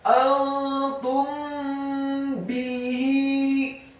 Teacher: Hukum bacaannya adalah ikhfa syafawi. Apabila ada mim yang sukun bertemu dengan huruf ba, maka hukum bacaannya adalah digunnahkan atau didengungkan.